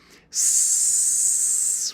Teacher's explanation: the first sound in that word is s, and it is a sound that I can hold. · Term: continuous sound